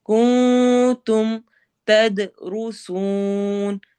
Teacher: تد دال پہ قلقلہ ہوگا